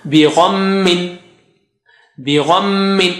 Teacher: when shadda comes on meme or noon, you stretch it double with your nasal sound